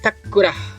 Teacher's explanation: The ta is a retroflex consonant, thus the Visarga becomes the retroflex fricative, or sha. Thus the sentence becomes Krishnash Takura.